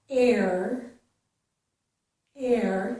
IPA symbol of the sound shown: ɛɹ